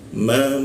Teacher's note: masuk ke ma bibir bertemu bibir